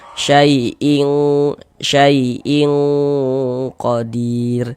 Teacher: di bagian ing-nya itu suaranya itu kita tahan, kita panjangkan sebentar, kita dengungkan sepanjang dua harakat. Nah, kemudian kan disamarkan, didengungkan. · Dibaca samar, dibaca samar kemudian didengungkan seperti itu · Bunyi tanwinnya ini. Cuman dia kalau ikhfa hakiki abad itu bunyi samarnya itu dia condong berbunyi eng